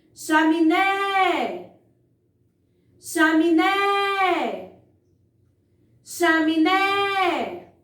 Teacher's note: Percebam que eu enfatizei muito mais a sílaba né. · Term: sílaba tônica